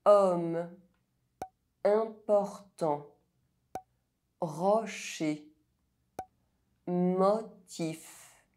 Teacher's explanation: O is pronounced [ɔ] when followed by a pronounced consonant, other than a [z] sound